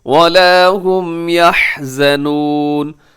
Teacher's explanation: حا ذرا حلق سے ادا کیجیے گا اور صحیح مخرج سے